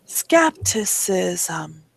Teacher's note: there is a vowel in between the s and the M you don't see it but it's a schwa